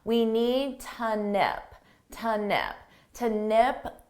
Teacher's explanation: notice how to becomes more of an unstressed T